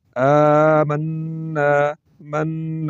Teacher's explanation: آواز کو ناک میں لے جا کر تھوڑا سا لمبا کیا · نون مشدد ہے تو اس کو غننے کے ساتھ پڑھیں گے اور 2 مرتبہ پڑھیں گے ، آمنا، من، آواز کو ناک میں لے جا کر تھوڑا